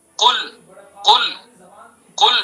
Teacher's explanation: قل قل قل بڑے قاف سے، یعنی زبان کی جڑ سے ادا کریں گے، زبان کی جڑ کو اس کے مقابل اوپر کے تالو پر لگائیں گے تو قل بنے گا. قل تھوڑا سا اوپر کو آ جائیں گے تو کل بن جائے گا.